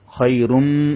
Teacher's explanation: মিমের মধ্যে তাসদি ওয়াজিব গুন্না